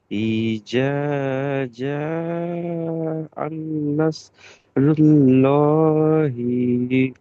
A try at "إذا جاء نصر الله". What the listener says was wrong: ওটা আন লয়, এটা আ। ইজাজা আন লয়, ইজাজা আ।